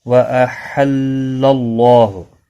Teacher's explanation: اللہ کا لام زبر کی وجہ سے پر پڑھا جائے گا